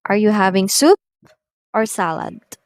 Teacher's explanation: can notice the two options that are mentioned in the question the first word or choice is being risen up while the other one the latter requires the falling intonation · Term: rise and fall intonation